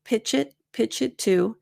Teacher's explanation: because of the linking with pitch it I find that I don't reduce to as much in this particular example